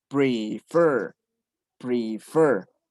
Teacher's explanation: aquí está acentuada en el último